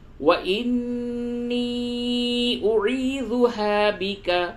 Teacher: نون مشدد ہے غنہ کریں گے، اور یا مدہ ہے اور اس کے اوپر مد بھی ہے